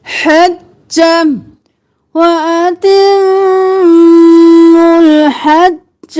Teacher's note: ह गले के दरमियान से